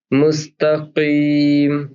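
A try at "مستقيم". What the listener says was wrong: हाँ अब थोड़ा सा यही आपने जो अभी हल्का सा गैप दिया ना, मुस्तकीम मुस्तकीम। हाँ ये हल्का सा, आप जब भी लगे आपको सेग्रीगेट करिएगा। मुस्तकीम, हल्का सा गैप देके फिर वो धीरे धीरे प्रैक्टिस में आ जाएगा चलता।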